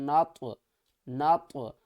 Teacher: یوم، نون کو طوا کے ساتھ ملائیں گے۔ طوا کو ہم نے تھوڑا سا ہلا کر پڑھنا ہے، کیونکہ یہ حروف قلقلہ ہے، تو جب بھی طوا ساکن ہوگا تو ہم طوا کو ہلا کر پڑھیں گے۔